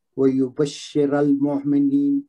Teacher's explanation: وَيُبَشِّرَ الْمُؤْمِنِينَ شین پہ مشدد ہے اس کو زور دے کے پڑھیں گے. را پہ زبر ہے اس کو موٹا پڑھیں گے. مومنین میں یا مد آ رہا ہے.